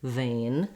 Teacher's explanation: just make sure that you lengthen a and you tend to relax and close a little as you're saying it watch your v sound that you have your upper teeth and · as you're saying it watch your v sound that you have your upper teeth and your lower lip together and the sound continues it's just like the f sound with the voice on vein and then we have the n sound so fairly straightforward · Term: diphthong a